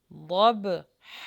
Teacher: یہاں پر ضاد کا مخرج لگے گا اور با کے اوپر جزم ہے تو یہاں پہ قلقلہ کریں گے۔